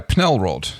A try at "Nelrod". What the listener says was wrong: no, the P is silent. Silent. It's Nelrod.